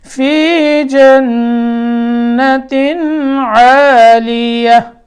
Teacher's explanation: نون میں نون مشدد، یہاں غنہ کریں گے